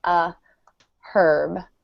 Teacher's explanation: But in British accents, the H is pronounced, so they'll say a herb.